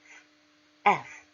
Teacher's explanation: F 발음을 하실 때는 윗니를 아래 입술에 올립니다.